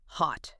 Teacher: It's not tight and rounded. Americans tend to make it lower, stronger, more open. Almost like hot.